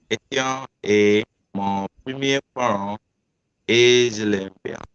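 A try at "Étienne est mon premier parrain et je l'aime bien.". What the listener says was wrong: Okay. I heard parent. But it's not parent, it's parrain. Parrain means godfather. Parent means parent. So here we have double N, so we have to say Etienne est mon premier parrain et je l'aime bien.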